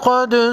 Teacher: قاف حروف مستعلیہ میں سے ہے، موٹا پڑھیں گے